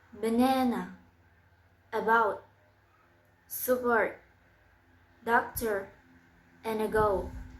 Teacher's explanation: place of articulation is middle central